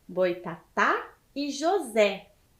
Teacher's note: então é a última sílaba tônica do Boitatá e de José